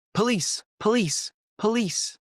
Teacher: It's like the O doesn't exist. So it becomes police, police, police.